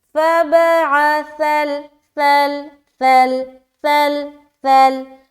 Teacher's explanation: سا جو حرف ہے اس میں سیٹی والی آواز نہیں آئے گی